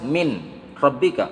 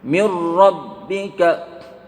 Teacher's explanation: Apabila nun sukun bertemu dengan huruf ra dan lam, maka seolah-olah nun tidak ada, artinya langsung menempel ke huruf ra. Atau apabila di depannya huruf lam dan maka menempel harus ke huruf lam. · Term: idgham bila gunnah